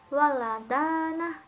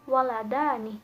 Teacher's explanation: Fathah tawilahnya ini mempengaruhi huruf fathah qasirah sehingga berubah menjadi kasrah qasirah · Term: disimilasi progresif